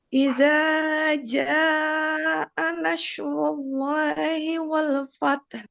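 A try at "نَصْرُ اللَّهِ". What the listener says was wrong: Oke, jangan berubah. Jangan jadi shin, nash, tapi so, S tebal. So, nas, nas. Jangan nash, nas, as, as.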